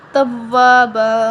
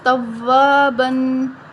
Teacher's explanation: با کے اوپر جو دو زبر ہیں تو وہ وقف کی صورت میں ایک زبر پڑھا جائے گا اور ایک زبر ختم ہو جائے گا ٹھیک ہے ایک زبر